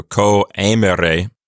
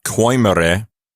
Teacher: That is called a diaeresis, and it means to not pronounce those two vowels as a diphthong. So you say co, and then you say the E sound separately.